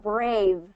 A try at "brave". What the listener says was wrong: No, get that V at the end. Brave.